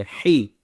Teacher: ہا گلے کے اوپر والی سے آواز نکلے